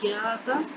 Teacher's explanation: کاف جو ہے اس پر صرف زبر ہے، اس کو لمبا نہیں کریں گے